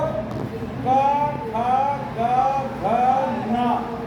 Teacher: जहाँ से बाकी के 4 वर्ण बोले जा रहे हैं उसी स्थान से बोलता है। साथ में थोड़े नाक की आवश्यकता उसको उच्चारण करने में पड़ती है, नाक की थोड़ी सी साउंड आती है उसमें, ठीक है ना।